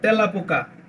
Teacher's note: 3 নম্বর নিয়ম হচ্ছে দেশি শব্দে এ ধ্বনি বিবৃত হয়